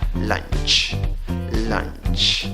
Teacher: Escribes la palabra con 5 letras, pronuncias la palabra con 4 sonidos. En la escritura tienes una U, en la pronunciación no va U, va schwa, la que no es ni A, ni E, ni O, la vocal que se duerme.